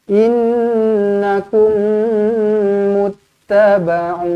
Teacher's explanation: Di dawam mislain. Dengungkan 2 harakat, rapatkan bibir, dengungkan 2 harakat. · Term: mim sabdu